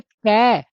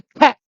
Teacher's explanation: जैसे हम बोलेंगे कै, और कै के बाद बोलेंगे ख, तो कै ख, तो ख में ज्यादा हवा निकली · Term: महाप्राण